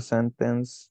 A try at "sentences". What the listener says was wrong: The sentence? Yo veo una S aquí.